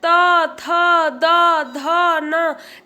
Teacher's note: जब त कहते होंगे तो देखते होंगे कि आपका जीभ आपके दांतों पे आके लगता है।